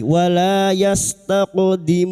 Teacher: Wala, lam-alif, dua harakat kita panjangkan, mad thabi'i